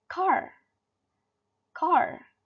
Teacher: in USA they pronounce car as car, car. The R sound is really strong